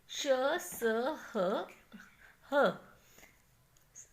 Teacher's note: इन व्यंजनों का उच्चारण के समय मुख से हवा गर्म निकलती है और ये घर्षण पैदा करते हैं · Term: ऊष्म व्यंजन